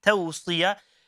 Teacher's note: we shouldn't be stretching the letter sad